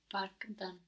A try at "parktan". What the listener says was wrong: With a D, parkdan. So here we had the hard version of D, which is a T. No, because K is a hard version of a G, really. G, K, the T. So we matched that. We matched those together. We said parktan with a T.